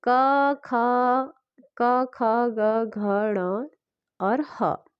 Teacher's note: तो ये आपके कंठ से बोले जाते हैं